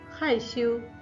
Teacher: 害 fourth tone, 羞 first tone